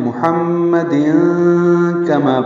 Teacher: ملانے کی صورت میں وعلی آل محمد کما، یہ اخفا ہے، تنوین کے بعد کاف آنے کی وجہ سے نون کی آواز کو چھپائیں گے